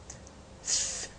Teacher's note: way of these two organs do to produce a sound F the lips touches the upper teeth F making a narrow passage between them F then the air comes outside between this narrow passage f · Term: factive